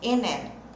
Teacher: Eu não pauso, eu não separo. Meu N emenda com A. N. Tem que sair esse som desse N aqui, ó.